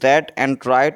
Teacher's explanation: The R sound is red and right is formed with the tongue tip raised and curled back near the alveolar ridge